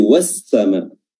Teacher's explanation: Lafaz waw dan langsung bertemu dengan alif dan lam dikata as-sama, yang semestinya al-sama, ya. Namun karena pelafalan huruf lam yang berdekatan dengan huruf sin, maka langsung dileburkan atau diidghamkan langsung ke huruf sin. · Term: alif lam syamsiyah